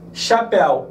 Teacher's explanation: Eu percebo que a pronúncia corrente de ar sai praticamente pela cavidade bucal então eu tenho um ditongo aqui ó oral